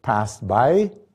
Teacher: if it's followed by a consonant like passed by she's much more likely to lose that t because then you have three consonants in a row